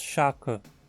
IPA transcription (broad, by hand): ʃakə